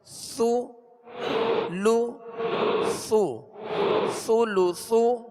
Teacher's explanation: اس میں سختی نہ ہو، ثا کو نرمی کے ساتھ اور باریک پڑھیں گے